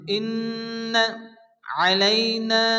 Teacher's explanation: নুনের উপর তাসদীদ নুন গুন্না ওয়াজিব। ইন্ন আলাইনা, নালিফ মাদ্দা এক আলিফ টেনে পড়তে হবে।